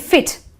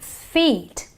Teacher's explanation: we elongate the e so it is the long e sound